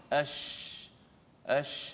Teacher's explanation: Dia hanya ash, boleh lihat mulut saya, ash, kerana makhrajnya di tengah lidah. Bila terangkat ke langit dan suara tu hemburan daripada mengena belakang gigi atas, belakang gigi bawah, kemudian dia memenuhi mulut, jadilah sifat tafasyi.